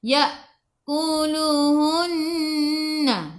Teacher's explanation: Nun ada sabdu, tekan ke dalam nun dan dengung dua harakat wajibul gunnah.